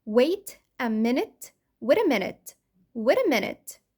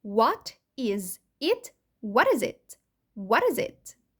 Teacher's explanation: T between two vowels flapty، أو نسميها fast D أو soft D، أو عاملة زي الراء بالعربي، ولكن نخلي بالنا إن هي مش بتحصل في البريتش إنجلش.